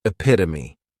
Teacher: the third syllable has that schwah and the last syllable is that long e · Next is epitome. And this noun has four syllables and the stress is on that second syllable · this noun has 4 syllables, and the stress is on that second syllable, epitome. This is a word that when you see it, many times people may mispronounce it because the 3rd syllable has that schwa, and the last syllable is that long epit-o-me.